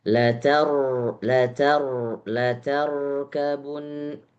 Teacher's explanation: Sedikit tawasud di huruf ro yang sukun.